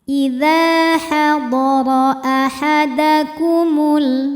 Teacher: Huruf ra dibunyikan secara tafkhim karena berharokat di atas yaitu fathah. Cara membacanya ditebalkan.